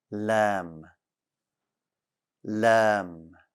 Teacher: the letter lamb is light back of your tongue stays flat also the letter lamb does not have any air no air